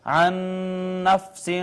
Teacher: عن نفس، یہاں پہ آپ دیکھیں دو نون اکٹھے آگے، پہلا ساکن تھا دوسرا متحرک، پہلے کو دوسرے میں ضم کر دیا، ادغام کر دیا، یہ ادغام متماثلین ہو گیا.